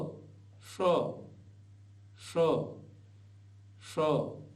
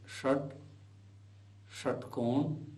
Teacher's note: यह मूर्धा से बोला जाता है तालू के ऊपर जीव को ले जाइए जहां से ट बोलते हैं ट बोलकर देख लीजिए जहां ट बोलते हुए जी पहुंच रही